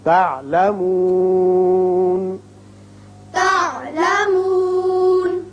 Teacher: ثم كلا سوف تعلمون ثم كلا سوف تعلمون تعلمون تو وصل کی صورت میں ہوگا. جب وقف کریں گے اور ہے بھی علامت وقف مطلق کی، نون ساکن پڑھیں گے